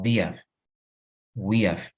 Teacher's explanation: cuando hablas rápido, la H se elimina